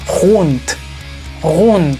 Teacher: cuando la palabra en alemán termina con la letra D. Esa D se transforma en un sonido T.